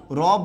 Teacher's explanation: আপনার জিহ্বার আগা কাঁপে র বললে অবশ্যই কাঁপে